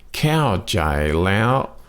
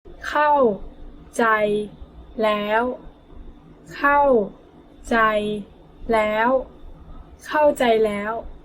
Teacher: So เข้า is falling tone. ใจ flat tone. And then แล้ว high tone